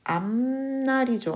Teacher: 니은의 영향으로 피읍이 비음화가 되네요